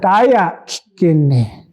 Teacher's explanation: That kikini, that is actually a voiceless vowel, a voiceless eh sound.